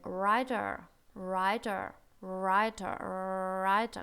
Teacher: Никакого рычащего, дребезжащего р тут быть не может в английском языке. Мы не writer говорим, мы говорим writer, writer, writer, writer, как будто бы отталкиваемся немножко, да, writer, разгоняемся на этом звуке.